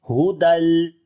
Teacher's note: बगैर गुन्ने के इदगाम होगा, गुन्ना नहीं करेंगे, खाली मिलाएंगे। हुदल اور لام کے اوپر صفت توسط آ جائے گی دونوں لام کے اوپر.